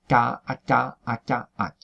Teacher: Entonces, por la propia coarticulación se va muy hacia adelante el dorso de la lengua, casi pues eso, a la zona palatal, más que velar, se adelanta